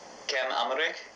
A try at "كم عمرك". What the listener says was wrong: It's not كم عمرك, it's كم عمرك. عمرك. You cannot say عين. You cannot say the letter عين. You cannot even pronounce the letter عين correctly.